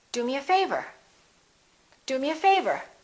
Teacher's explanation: do is important but favor gets more stress because it comes at the end